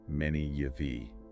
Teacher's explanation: a little y sound like the y in yes the j sound gets inserted between them.